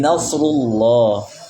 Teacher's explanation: lam dibaca tebal dan dibaca panjang dua harakat · Lam dibaca tebal dan dibaca panjang 2 harokat. Walaupun di sebagian mushaf, terutama di mushaf Rasul Usmani cetakan Madinah, lamnya tidak ada tanda madnya. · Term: lam yang tafhim, lam yang tafkhim